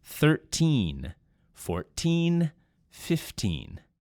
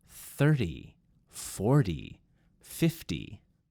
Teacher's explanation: with the teen numbers, you definitely want to hit that N sound at the end.